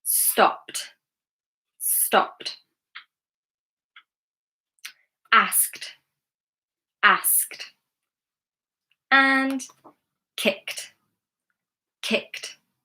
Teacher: Ending is unvoiced. So when we add the ED, it will sound like tuh